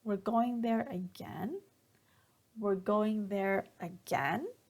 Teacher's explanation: when we are being sarcastic like we're making a joke sarcasm then we use a falling intonation